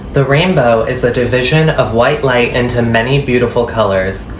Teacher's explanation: I'm really happy with the pitch it's like over 300 Hertz and it was like 130 before